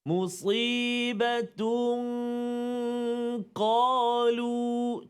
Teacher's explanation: الذين إذا أصابتهم مصيبة قالوا kat situ musibatun qalu, tanwin bertemu dengan huruf qaf. Tanwin bertemu dengan huruf qaf, maka dengung bacaan dia 2 harakat. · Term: ikhfa hakiki